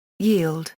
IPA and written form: ɣɪːɫd (yield)